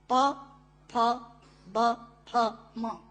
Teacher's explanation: दोनों होंठ मिलाकर बोले जा सकते हैं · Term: ओष्ठांग